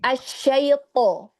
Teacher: huruf to-nya diangkat isti'lanya ya, sempurnakan itbaqnya